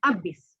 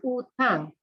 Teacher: the loss of the sound H in a word initial position in Sri Lanka Malay. So now you are probably familiar with the word habis to mean finish or end in Indonesian or in standard Malay, but in Sri Lanka, we say abis.